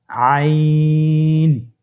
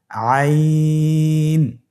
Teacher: আইন হরফটি কন্ঠনালীর মধ্যখান থেকে উচ্চারিত হয়